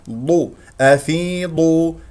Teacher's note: بمقدار الحركتين افيض همزه قطع الفاء مكسوره اكسرها جيدا بعدها ياء الضاد مفخمه مرتبه ثالثه لانها مضمومه ضو افيضو هكذا ونضم الشفتين فيها من كسره الميم جيدا والنون